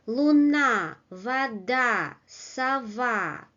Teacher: constructions with two syllables, but the second syllable is stressed